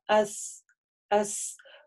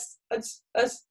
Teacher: у нее должен быть звук такой сафир, называется, это ее сифа, как свист